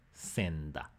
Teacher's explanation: But because we have two different places, in modern Spanish, the first sound became the same place as the second one. Here we have an alveolar N with an alveolar D, senda. Makes it easier, means that you need to move your tongue a little bit less because it's already going to be in one place as opposed to moving your articulation from bilabial to alveolar. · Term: place assimilation